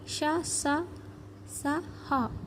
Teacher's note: వీటిని ఊష్మాలు అంటారు ఊది పలికే అక్షరాలు